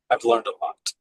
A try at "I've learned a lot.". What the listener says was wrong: Yeah, you don't have to emphasize the T now. I've learned a lot. and I just sort of close my mouth. I've learned a lot.